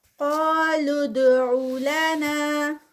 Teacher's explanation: قا heavy starting پہ اور ساتھ میں 2 کاؤنٹس کا اسٹریچ ہوگا۔ لُدْعُ لَنَا اور یہ لام جو ہے یہ ڈائریکٹ جا کر دال میں مرج ہوگا تو یہاں پر قلقلہ ہوگا۔